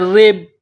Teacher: را کو با کے ساتھ ملائیں گے، یہ با ساکن ہے، با ساکن کے بعد دوسری با ہے جو مشدد ہے، تو را کو با کے ساتھ ملانا ہے، پلس کرنا ہے. را کے نیچے زیر ہے تو را کو باریک کرنا ہے